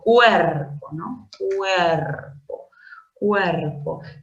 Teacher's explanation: la vocal cerrada U y la vocal abierta E forman parte de una misma sílaba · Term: diptongo